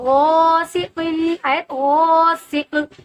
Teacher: ٹھیک ہے، تو غاسق، آیت غاسق، یہاں پر قوف قلقلہ کا حرف ہے. آیت کے بعد جب یہ ساکن ہوگا تو یہاں قلقلہ ہوگا